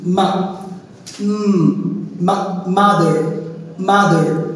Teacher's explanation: দুই ঠোঁটের সূত্রাংশ একসাথে করে তারপর আমাদের মুখ বন্ধ করে দিয়ে নাক দিয়ে বাতাস বের করে উচ্চারণ করতে হবে